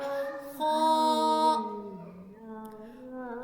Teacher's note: خ ہمارے حلق کے پہلے حصے سے ادا ہوتا ہے۔ ہمارے حلق کے 3 حصے ہیں اور اس میں جو ہمارے منہ کی جانب ہے حصہ وہاں سے ادا ہوتا ہے خ۔